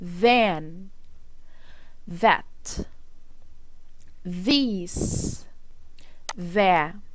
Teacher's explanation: احبال الصوتيه بتتحرك في صوت ال TH. ما ننساش اللي احنا لازم نطلع لساننا بره · ال TH طبعا النسبة القليلة اللي هي أحبال الصوتية فيها بتتحرك